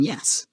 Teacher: Palatal. Made by bringing the tongue close to the hard palate, the roof of your mouth, like the sound in yes.